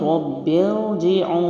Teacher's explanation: پہلا را موٹا ہے، با پہ سختی جماؤ ہے کیونکہ تشدید ہے